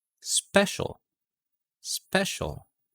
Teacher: in the special special there's no h sound after the p sound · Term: unaspirated